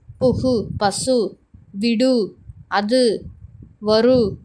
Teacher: தனிக்குறில் எழுத்தை அடுத்து வரும் வல்லின உகரங்கள் ஒரு மாத்திரை அளவுக்கு முழுமையாக ஒலிக்கும்